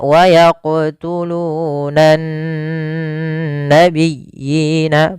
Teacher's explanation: lafal nun ada bacaan gunnahnya, ditahan suara nunnya